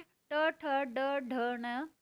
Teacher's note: फिर है मूर्धन्य, तालु के मूर्धा भाग से, इससे कौन सी है, ट ठ ड ढ न, और साथ में षटकोण वाला श।